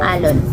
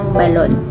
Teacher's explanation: sa posisyong inisyal ng salita ang patinig ay hindi mabibigkas ng normal kung hindi pangungunahan ng impit